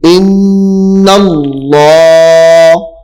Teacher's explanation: نون کو جو ہے وہ سختی سے پڑھنا ہے تاکہ اس کے اوپر شد ہے, غنہ کرنا ہے